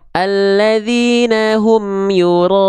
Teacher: mad wajib dia dibaca ya, boleh panjangkan 5 harokat